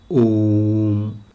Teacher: इसके उच्चारण में दो मात्रा से अधिक का समय लगता है अर्थात तीन मात्रा का समय लगता है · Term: प्लुत स्वर